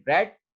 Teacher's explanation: post alveolar articulator of R, as in bread, are accompanied by slight lip rounding. के मतलब जो है वो थोड़ी सी lip rounding जो है वो जो है वो मैटर करती है।